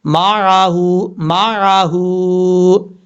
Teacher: میم کے بعد جو عین ہے، عین کو کلیئر کر کے پڑھنا ہے، حمزہ کی آواز نہیں آنی چاہیے